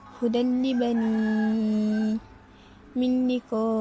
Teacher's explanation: Manakala terdapat juga idgham bila gunnah. Idgham bila gunnah memasukkan tanpa dengung.